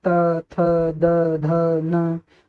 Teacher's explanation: त वर्ग का उच्चारण करते समय हमारी जो वायु होती है हमारे दांतों को स्पर्श करते हुए निकलती है